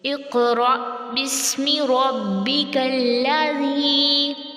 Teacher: زال کو نرمی سے اوپر نیچے کے دانت قریب کریں گے اور تھوڑی سی نوک باہر کو نکلے گی